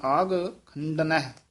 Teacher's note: ਇਹ ਆਗ ਘਗੇ ਨਾਲ ਬੋਲਣਾ ਕਿਤੇ ਅੱਗ ਨਹੀਂ ਕਹਿ ਦੇਣਾ ਘਗਾ ਹੈ ਪੋਲਾ ਬੋਲਣਾ